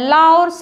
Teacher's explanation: ताथा दाधा ना दंत से उच्चारित होता है, ला और सा भी दंत से उच्चारित होता है